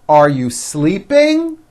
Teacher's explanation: notice how my voice goes up at the end of a question